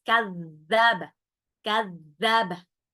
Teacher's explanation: zalnya ujung lidah ya bertemu dengan gigi seri atas